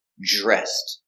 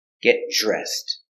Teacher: the DR is pronounced with the J sound, like jump.